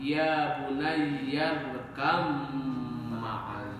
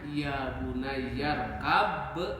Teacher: Karena di situnya ada mim yang bertasdid, maka huruf ba qalqalah asalnya dilebur bergabung dengan mim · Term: merger